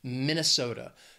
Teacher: four syllables stress is on that third syllable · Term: schwa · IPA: /ˌmɪn əˈso də/